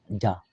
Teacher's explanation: তার বরাবর উপরে তালের সংজ্ঞা লাগায়ে জিম ইয়া উচ্চারিত হয় তাহলে জিম জবর জা জিহ্বার মাঝখান থেকে আসছে